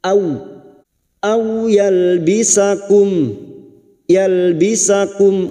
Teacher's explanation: fathah bertemu sukun kita lunakkan au seperti bertemu dengan huruf abjad u